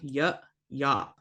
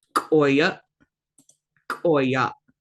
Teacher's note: For the A, you're going to be opening your mouth a little bit more, not so much for the schwa.